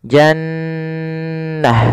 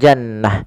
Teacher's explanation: Cara membacanya adalah suara nunnya ditahan dulu, ya, jannah, tidak langsung jannah. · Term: bacaan gunnah